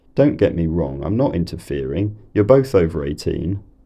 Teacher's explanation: tones preceded by a falling head to the international phrase so there's a fall in pitch and then a rise · is more likely to use lowrise nuclear tones preceded by a falling head